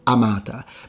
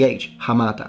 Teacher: in the ecclesiastical pronunciation which follows Italian rules, the H is dropped because in Italian the hes are not pronounced.